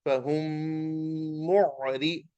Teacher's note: So the mim will be recited with the gunna. So we say fahum mim dhamma mu ain sakin mu, fahum mu ra kasrari, fahum mu'ri, like that. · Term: idgham shafawi